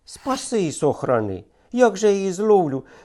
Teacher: насамперед мелодику чітке роздільне майже монотонне вимовляння кожного складу